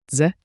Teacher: A quick DZE, like J, with a soft D.